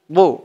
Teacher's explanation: মুখটা একটু ভরপুর থাকবে, গুল হয়ে যাবে এমন মনে হবে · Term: দদের উচ্চারণটা